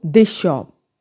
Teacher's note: अब दिस शॉप की बजाय वर्ड क्या बन जाएगा, दिस शॉप. श साउंड स ने ले ली, स जो है वो फिनिश हो गई और स की जगह श आ गई